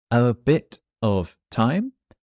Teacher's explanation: we have a fast phrase with a t so often that t becomes a d